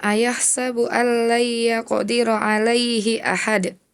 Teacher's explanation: Nanti qalqalahnya dipantulin lagi ketika di akhir ayat. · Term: Qalqalah kubro